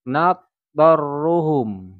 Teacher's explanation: idgham yang digabungkan suaranya. Ya, jadi langsung masuk suara to.